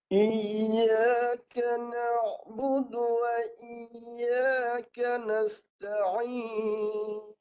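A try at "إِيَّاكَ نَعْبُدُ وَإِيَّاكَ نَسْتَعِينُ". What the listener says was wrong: dia punya huruf ya tu tak tak jelas lagi Cuba lagi sekali Mantap lagi bagi jelas huruf ya tu Tengah lidah ditinggikan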